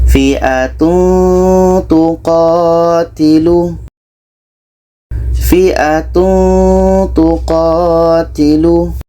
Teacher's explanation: Jadi ketika nun mati tanwin bertemu dengan huruf yang 15 ini, itu hukumnya ikhfa hakiki. Harus dibaca samar atau sembunyi. Dan dibaca secara dengung. · Ketika kita menyebut tanwin, kita sudah merasakan huruf ta, sehingga ada bunyi eng di situ. Fi'atun tuqatilu, ada kita samarkan.